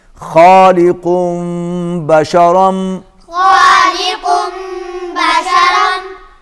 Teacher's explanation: دو پیش ہیں اور اس کے بعد با آ رہا ہے، یہاں پر آپ قاف کو میم کے ساتھ ملائیں گے تو یہ بن جائے گا خالقم بشرم